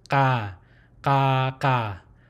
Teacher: there's a glottal stop and a guttural open sound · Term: open syllable